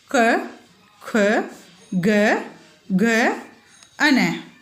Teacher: इनके उच्चारण में जीभ का पिछला भाग गले को छूता है, इसीलिए इन वर्णों को कंठ से बोला जाता है। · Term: क वर्ग